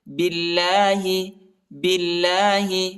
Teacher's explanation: اللہ کے نام کو باریک پڑھنا ہے، نرم پڑھنا ہے، موٹا نہیں پڑھنا ہے، کیونکہ اللہ کے نام سے پہلے زیر آیا ہے با پر